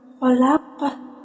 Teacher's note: Khalaqah itu yang terakhir, hukum bacaannya qalqalah kubro, di mana huruf qalqalah yaitu qaf itu berharakat sukunnya bukan sukun asli melainkan sukun yang diwakofkan karena ia berhenti di akhir. Jadi cara bacanya itu pantulannya besar.